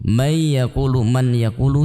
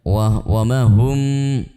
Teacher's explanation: May yaqulu, man yaqulu juga kita baca dengan mendengung